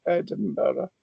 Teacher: you'll have heard I pronounced the N like an M because it's a labial consonant